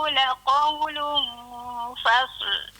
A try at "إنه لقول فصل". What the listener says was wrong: Itu memang sa lah. Tadi dia fasa. Kalau huruf tunggal fasa. Fasa. Kalau ni cantumlah fa dengan sa. Huruf fa tu tipis. Sa tu tebal. Fas buat itu. Innahu laqawlun fasl. Fasl.